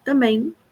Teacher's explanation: os nasais finais mn em português acabam frequentemente não sendo pronunciados, né, pelos brasileiros